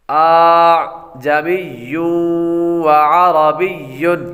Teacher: دوسرے حمزے کو نرمی کے ساتھ پڑھا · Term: تسہیل